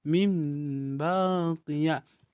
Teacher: huruf ba maka bacaannya itu akan berubah menjadi mim baqiya dibalikkan suara yang awalnya dia suara Nun menjadi suara mim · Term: iqlab